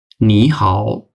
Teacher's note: first হবে হয়ে যাবে সেকেন্ড টন এবং পরবর্তীটা হয়ে যাবে থার্ড টন